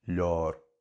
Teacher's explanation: in Ulster, leabhar with instead of a diphthong, just one long aw sound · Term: long O sound